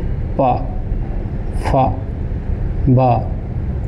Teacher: हमारे दोनों होट मिल जाएंगे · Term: ओस्ट